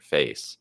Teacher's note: So in the word face, it has the vowel A, that sound, which is really like two vowels, E, A, something like that connected together